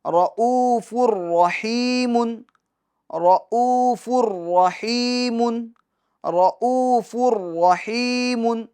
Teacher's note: محمد الرسول اللہ، آگے چلتے ہیں، رؤوف الرحیم، رؤوف الرحیم، رؤوف الرحیم، یہ را کو بھی پور پڑھیں گے، پھر حمزہ میں واو مدہ ہوگا، اور فا پر جو تنوین ہے، تو اب دیکھیں تنوین کے بعد حروف یرملون میں سے را آ رہا ہے تو ادغام ہوگا، مگر ادغام بلا غنہ، یعنی غنہ نہیں کریں گے